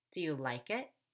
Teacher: like is the most important word and I actually fall on like so that I can go up on it